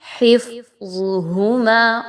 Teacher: حفظہما ایسا نہیں پڑھنا، بلکہ آپ نے فا کو باریک، حفظہما، اور ظا اور ہا موٹی پڑھی جائیں گی